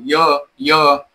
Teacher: आता आपली जीभ बघा टाळ्याला आपल्या स्पर्श करायली म्हणून ते टाळू हे त्याचं उच्चारण स्थान आहे.